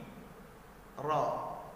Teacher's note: Huruf ra memiliki makharijul huruf, yaitu kepala lidah kita bertemu dengan langit-langit di bagian depan.